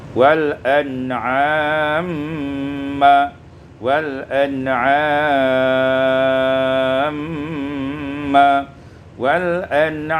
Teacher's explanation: idghamul mim fil mim, diidghamkan mim pada mim menjadi wal an'amma, wal an'amma, wal an'amma, qasar, tawassut dan isba'.